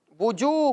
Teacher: اسی طرح یہاں پر آپ دیکھ سکتے ہیں کہ واو مدہ کا قاعدہ بھی پایا جا رہا ہے، واو ساکن سے پہلے پیش ہو تو واو مدہ کا قاعدہ لگتا ہے، اور واو مدہ کو ایک الف کی مقدار میں کھینچ کر پڑھتے ہیں